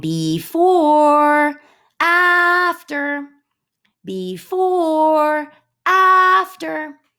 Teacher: unstressed on the short syllable and stressed on the one that you elongate